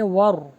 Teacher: واو پر ہوٹوں کو گول کیجیے، را کو ہیوی کیجیے